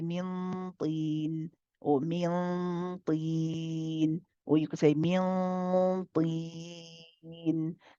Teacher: This becomes mad aarid lisukun. The ya here in the middle is mad aarid lisukun. It would be 2, 4, or 6 counts.